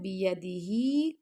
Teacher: بیدہی کھڑا زیر ہے اس کو 2 سیکنڈ تک لمبا کیا